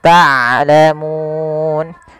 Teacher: ain punya sifat bainiyah. Di antara syiddah dan rokhawah tidak dialirkan suaranya dan tidak terlalu ditahan suaranya, tapi di tengah-tengah di antara keduanya. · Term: huruf ain